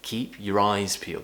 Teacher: eyes is important so we do need to stress that word